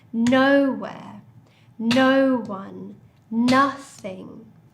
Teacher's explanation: So for all of these words, the stress is the same. The stress is on the first syllable.